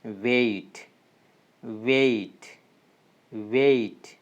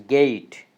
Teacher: The next sound we have, that is A. A means it starts at the sound A and slowly glides to the sound that is short E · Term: diphthongs